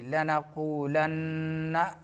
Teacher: واو میں مدہ اور نون میں غنہ زمانی